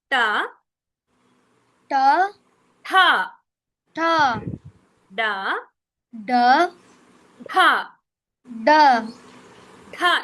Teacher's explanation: నాలిక అనేది కొంచెం అంగిటికి తలిస్తే అనుకో డ అనేది బాగా పలకవస్తుంది